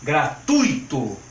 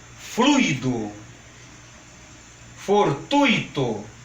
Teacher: Com força no U, quando for pronunciar essas palavras. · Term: acento tônico